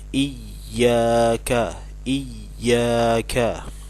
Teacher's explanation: Hamzah dan ia yang bertasydid jadi harus di tekan iyakah iyakah nggak boleh Iyakah jadi tidak dibaca panjang Iyakah tapi